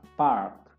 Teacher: Nah, polanya itu kalau ada AR, A-nya dibaca A panjang R